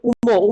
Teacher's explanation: আর নাসিক্য বর্ণের মধ্যে দেখো নাসিক্য হচ্ছে উম, উম দেখো উচ্চারণ করতে গেলে একটু নাকে বেঁধে যাচ্ছে